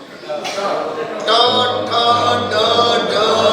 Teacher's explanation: દાંતની પાછળનો ઉપરનો ભાગ છે ને ત્યાં તમારી જીભ અડે છે